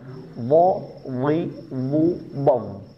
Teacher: Hub ini memiliki sifat jahr bukan. Jadi jangan ada nafas yang keluar. Mentang-mentang makhrajnya ada di ujung gigi seperti terkesan ada nafas yang keluar padahal tidak tertahan di dalam nafasnya.